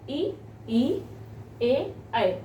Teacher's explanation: इनके उच्चारण में जीभ आगे की ओर आती है, इसलिए हम इसको अग्र स्वर कहते हैं।